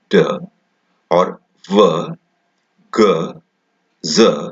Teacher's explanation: If you keep your fingers on your throat and try to say d or v, g, z, you can feel the vibration on your throat because d, v, g and z are voiced sounds.